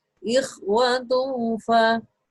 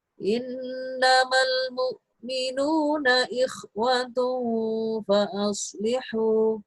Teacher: jadi tanwin bertemu dengan fa, maka dibaca samar atau ikhfa